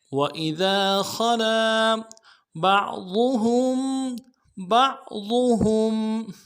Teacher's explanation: وَإِذَا خَلَا بَعْضُهُمْ با کو عین کے ساتھ ملانا ہے، عین کو موٹا کریں گے، ضاد کو موٹا کریں گے، اور ہا کو میم ساکن کے ساتھ ملانا ہے، میم ساکن میں یہاں پہ اظہار ہوگا